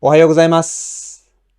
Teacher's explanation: But usually grown-ups would omit the accent on mas.